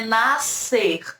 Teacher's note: SC vai ter o som só do S.